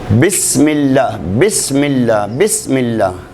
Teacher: दोनों होठों के अंदरूनी तर हिस्सों के इसाल से हरफे बा